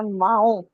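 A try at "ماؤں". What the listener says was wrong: वाव के ऊपर आपका हमजा भी है, माऊ।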